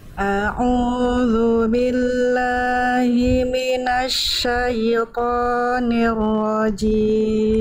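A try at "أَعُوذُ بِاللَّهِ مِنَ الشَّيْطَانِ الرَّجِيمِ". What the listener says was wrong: hati-hati jimnya Jangan becek Jim cimim tapi jim jim jim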